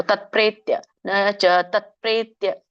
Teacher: ತತ್ ವ್ಯಂಜನ ಇದೆ, ತತ್ಪ್ರೇತ್ಯ ಕೂಡಿ ಹೇಳ್ಬೇಕು